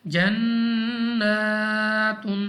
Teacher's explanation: نون مشدد غنہ کر کے پڑھیں گے. ہم نے اس کو نون مشدد کو کھینچنا بھی ہے اور غنہ کو بھی ہم نے کھینچنا ہے. جنات، پہلے ہم نے غنہ کو کھینچنا ہے، لمبا کرنا ہے، اور اس کے بعد ہم نے اس کو کھڑی زبر کے ساتھ پڑھنا ہے.